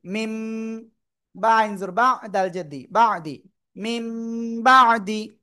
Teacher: নুন সাকিন বা তানবিনকে মিম দ্বারা পরিবর্তন করে পড়ব। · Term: ইকলাব